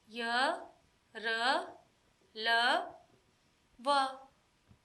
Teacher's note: इनके उच्चारण में जीभ का स्पर्श मुख के किसी विशेष भाग से नहीं होता, इस कारण उच्चारण में हवा कम टकराती है। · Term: अंतस्थ व्यंजन